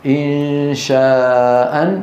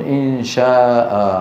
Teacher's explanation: وهذا المد من قبيل المد العوض وليس مد بدل، لأن ألفه عارضة بسبب الوقف